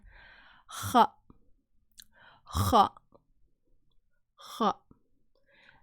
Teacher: pronounced with the back of the tongue near the upper part of your mouth